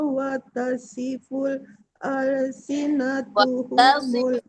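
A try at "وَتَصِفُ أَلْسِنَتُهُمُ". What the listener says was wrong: nggak ada watasiful. Watasifu bukan watasiful.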